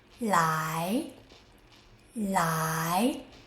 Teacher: The tip of the tongue touches behind the upper front teeth and the air flows around the side of your tongue.